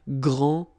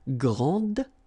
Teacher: And regarding the feminine form, you will pronounce it grande. Okay, don't insist on the final E, but then pronounce this D, grande, and then exactly the same pronunciation, grande.